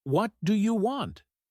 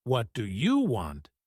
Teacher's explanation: if you say it with a flat tone it sounds neutral but if you stress you like what do you want it can sound rude or aggressive